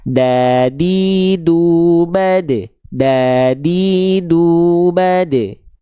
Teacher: Ujung lidah kita nempel ke pangkal gigi seri atas kita. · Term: huruf dal